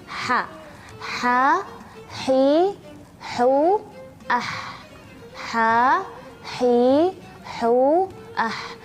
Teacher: suara Ha ini ada sedikit istimewanya istimewanya adalah Dia memiliki suara seperti suara berdesir ya seperti itu ya jadi harus lebih jelas jangan sampai Ee